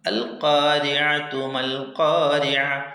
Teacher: അതിൽ ഹാ ഉത്തഅനീസ് ചേർത്തി ഓതുമ്പോൾ താ ആയിട്ട് ഉച്ചരിക്കണം, ഓതണം. വഖഫ് ചെയ്യുമ്പോൾ ഹാ ആയി ഓതണം.